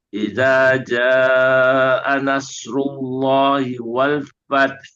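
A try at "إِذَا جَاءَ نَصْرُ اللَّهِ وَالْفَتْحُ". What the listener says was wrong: Alirkan lagi sedikit lagi huruf hak. Wal fath. Fath.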